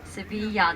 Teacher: The double L sounds kind of a Y